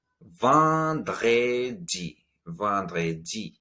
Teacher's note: The vent part has a nasal sound, and in the middle we have the French R.